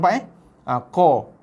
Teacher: bila kita lafazkan huruf qa, pangkal lidah kita terangkat berserta dengan kawasan tengah lidah juga terangkat. · bila kita lafazkan huruf qa, kawasan lidah kita yang paling dalam tu dia terangkat ke atas, ditekan ke pangkal kerongkong kita tu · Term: huruf qaf